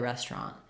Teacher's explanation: This middle syllable gets so fast that we just go right to a tr instead of ter.